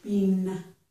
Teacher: bean I do release my tongue at the end of it